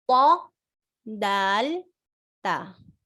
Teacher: the tip of the tongue touching the gums of the upper incisors, this area inside.